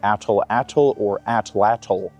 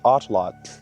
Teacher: you do not pronounce the L at the end of the word as a syllable. So pronounced correctly the word is atlot.